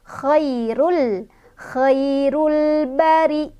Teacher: Khairul ba ada alif lam qamariyah karena ada alif lam bertemu dengan huruf qamariyah yaitu ba. Cara bacanya lamnya dibaca jelas.